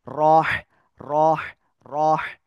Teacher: র হা গলাটা চেপে পড়তে হবে